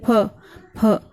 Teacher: फ को बोलते समय दोनों होठ छूते हैं, आप बोल के देखिए, फ फ, दोनों होठ आपस में एक दूसरे को छू रहे हैं, पर फ को बोलते समय फ मुंह से हवा निकल रही है, दोनों होठ एक दूसरे को नहीं छू रहे हैं। · जैसे सजा, जोर, फ का उच्चारण फ के भिन्न होना चाहिए। फ को बोलते समय दोनों होठ छूते हैं